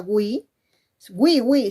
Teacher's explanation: hay una vocal cerrada que es la u más otra vocal cerrada que es la i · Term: diptongo de tipo homogéneo